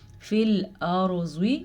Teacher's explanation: را ساکن سے پہلے زبر ہے تو را کو ہم پر کر کے پڑھیں گے.